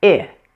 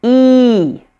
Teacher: The mouth position is similar, but the huge difference here is relaxed versus tense. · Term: long E